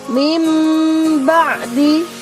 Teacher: yaitu huruf ba mudah diingatkan nah cara membaca bacaan iqlab yaitu non sukun atau tanwin beralih atau berubah menjadi huruf mim · Nah, di sini ada huruf nun bertemu dengan huruf ba. Huruf nun sukunnya itu berubah menjadi mim. Mim ba'di. Meskipun tulisannya min ba'di, tapi membacanya menjadi nun sukunnya berubah menjadi mim. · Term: iklab